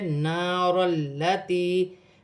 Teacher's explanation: اور الف مدہ بھی ہے. نار التی, لام مشدد ہے, لام کو را کے ساتھ ملا کر پڑھا جائے گا. یا ساکن سے پہلے زیر ہے تو یا مدہ بنے گی, اسے ایک الف کی مقدار کھینچ کر پڑھا جائے گا.